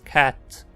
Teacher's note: E sua versão arredondada Vogal anterior quase aberta não arredondada. Fica na metade do caminho entre [ɛ] e [a] e sem arredondar os lábios.